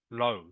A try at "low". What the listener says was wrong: Low. Okay, it's not Lao. All right, not Lao. It is pronounced just as if it was spelt L-O. Okay, it's low. I think you said Lao as well. It is actually pronounced low. Just like it was written L-O. pronounced low.